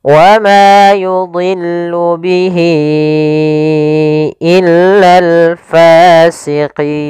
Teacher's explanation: Maka kita panjangan untuk panjang hi-nya adalah 4 harokat. Wa ma yudhillu bihi, ya 4 harokat baru pindah ke i. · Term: mad silah tawilah